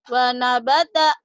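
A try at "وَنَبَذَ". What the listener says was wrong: Wanabaza. Jangan wanabata. Wanabaza.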